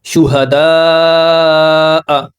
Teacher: مد متصل 5 حرکات کے برابر لمبا کرتے ہیں، یعنی 2.5 سیکنڈ تک، 2.5 سیکنڈ تک ہم اس کو کھینچتے ہیں 5 حرکات کے برابر.